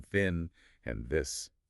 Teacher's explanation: we have dental sounds where the tip of the tongue touches the upper teeth